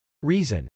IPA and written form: rˈizən (reason)